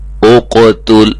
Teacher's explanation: قاف موٹا ہے، تا باریک ہے، یہ نہ ہو کہ ہم تیزی میں پڑھیں اور یہ بھی موٹا ہو جائے